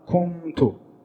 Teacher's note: I did not say kuntu in the way I would pronounce al-idhar. I did not pronounce the noon fully, but I did not take it out completely. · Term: ikhfa